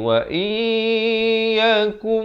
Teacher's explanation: Asalnya wa in. Tapi bila datang ya, masuk beserta dengung. Jadi wa iyyakum. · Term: idgham bi gunnah